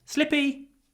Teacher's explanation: We drop the R and we say slippy.